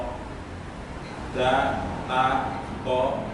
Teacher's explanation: Sami tempatnya yaitu sama-sama dari ujung lidah nempelnya ke pangkal gigi yang atas. Pangkal gigi depan kemudian yang atas.